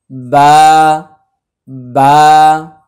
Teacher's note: বা এর মাখরাজ হচ্ছে দুই ঠোঁটের ভেজা অংশ · বায়ের উপরে 2 পেশ, সামনে আসছে মিম, তাহলে আমাদের মনে আছে বায়ের মাখরাজ হচ্ছে 2 ঠোঁটের ভেজা অংশ ভিতর থেকে। স্বাভাবিকভাবে একটা মানুষ যখন মুখ বন্ধ রাখে তখন সে বায়ের মাখরাজেই থাকে, বা জাস্ট খালি মুখটা ফাঁকা হবে, বা বা।